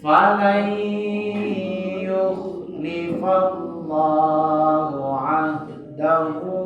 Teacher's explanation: Dahu 6 harakat. Ya, hu-nya panjang 6 harakat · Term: mat sila tawilah